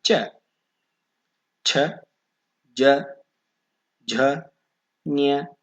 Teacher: ತಾಲುವಿನ ಅಥವಾ ದವಡೆಯ ಸಹಾಯದಿಂದ ಹುಟ್ಟುವ ಅಕ್ಷರಗಳು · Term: ತಾಲವ್ಯ ಅಕ್ಷರಗಳು